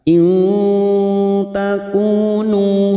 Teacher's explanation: Nun sukun bertemu ta ikfa hakiki, kita samarkan bunyi nun sukun mendengung selama 2 atau 3 harokat.